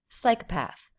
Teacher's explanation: there is secondary stress here, psychopath. But that just means it's a little bit longer. It doesn't have a big up-down shape the way psi has.